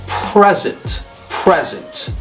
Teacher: when it's a noun the stress is on the first syllable it's present present when it's it means gift okay means [Music]